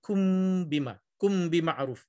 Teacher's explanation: tapi bila bertemu dengan ba ni, kun tu dah jadi kum bima'ruf